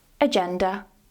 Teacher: The stress is on the second syllable here. And da at the end are both weak.